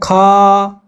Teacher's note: तो ख में ज्यादा समय लग रहा है ज्यादा प्राण वायु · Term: महाप्राण